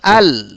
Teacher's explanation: শিক্ষার্থী বন্ধুরা, জিহ্বার অগ্রভাগের পাশ ও সামনের উপরের দাঁতের গোড়ার দিকের তালুর সাথে মিলে উচ্চারিত হয় একটি হরফ, তার নাম হচ্ছে লাম। অর্থাৎ জিহ্বার আগের অংশের কিনারা এবং উপরের দাঁতের মাড়ি আর তালুর কিছু অংশের সাথে মিলিয়ে উচ্চারিত হয় লাম